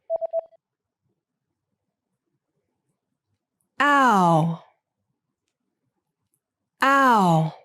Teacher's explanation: the sound that's pronounced with the lips unrounded I I and the sound that requires the lips moving from an unrounded to a rounded position